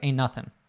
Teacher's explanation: the T is gone, the N's linked together and everything.